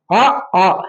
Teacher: அ ஆ இந்த ரெண்டு வார்த்தைகள் மட்டும் பாத்தீங்கன்னா வாய் திறத்தலாகிய முயற்சியால் பிறக்கிறது